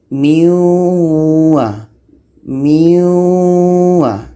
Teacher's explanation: Nun masuk kepada bunyi waw. Sama dengan tanwin waw. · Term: idgham